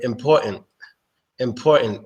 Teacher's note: instead of pronouncing the T sound at the end of the word you stop the sound with your throat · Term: drop t sound